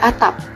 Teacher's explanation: P di akhir tidak dilepas kuat, tetap fonem P hanya cara ucapnya yang berbeda. · Fonem P di akhir tidak dilepas kuat.